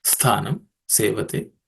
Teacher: the tha there is the second letter in the tha varga, so it has to be aspirated.